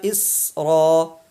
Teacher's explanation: سین جو ہے وہ حروف قلقلہ میں سے نہیں ہے، اس لیے یہاں پہ آواز لوٹانا نہیں ہے۔